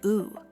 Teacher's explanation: Just say ooh like in pool, but with a straight mouth.